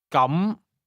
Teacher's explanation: Here's how to say, in that case, 請跟住講。咁。 say, in that case, or then, using a mid-rising tone.